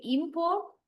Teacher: When you uh stress the first syllable, then the listener will understand you are referring to noun meaning.